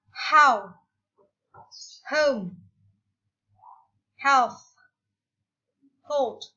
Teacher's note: bunyi dengan memberikan sedikit tekanan di bagian glotis, bagian pita suara